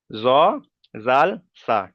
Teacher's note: তাহলে এখানে জ, জাল, সা উচ্চারিত করা থেকে জিভের আগা এবং সামনের উপরে দুই দাঁতের আগার সাথে লাগিয়ে উচ্চারিত হয়